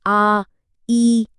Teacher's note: दीर्घ स्वर, जिन्हें बोलने में ह्रस्व से डबल टाइम लगता है